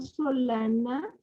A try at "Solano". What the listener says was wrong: Solano. Solano, con O al final.